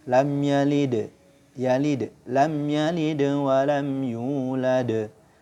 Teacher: membaca huruf qalqalah sukun yang berada di tengah kalimat atau akhir kalimat tanpa waqaf padanya. Maka suara pantulannya kecil. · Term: qalqalah sughra